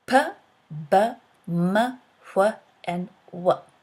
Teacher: five sounds we produce with our lips either pressed or brought close together